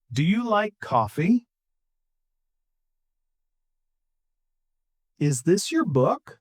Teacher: For yes no questions, your voice goes up.